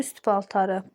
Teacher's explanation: P gəldi samit T düşür